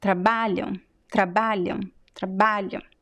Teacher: So the AM at the end is very weak because it's a weak syllable. The BA is very strong, trabalham, and the first syllable is also weak.